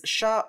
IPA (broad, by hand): ʃ